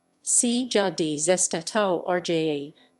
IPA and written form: ˈsɛːdja dʒestaˈtɔːrja (sedia gestatoria)